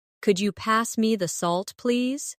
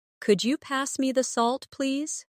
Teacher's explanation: my voice rises on could you and falls gently at the end